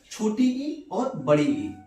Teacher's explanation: छोटी ई और बड़ी ई को तालव्य स्वर कहते हैं।